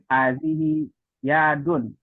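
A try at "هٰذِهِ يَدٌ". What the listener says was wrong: Hadhihi yadun. Jadi hanya nggak panjang, Pak ya. Hadhihi yadun.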